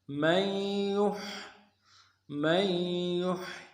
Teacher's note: نون ساکن نہیں پڑھیں گے، یا کے اوپر تشدید ہے اور تشدید کی وجہ سے زور دیں گے، اور یا کو آگے ہا کے ساتھ ملانا ہے.